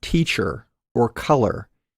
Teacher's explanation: the er has a weak version the r-colored vowel er as in the word teacher or color that is used in unstressed syllables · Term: weak er